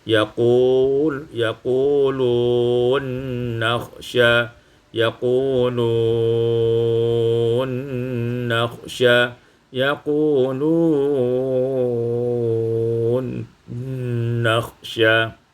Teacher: Pada ayat 52, yaquluna nakhsha, idghamun nun fin nun, diidghamkan nun pada nun maka menjadi yaqulun nakhsha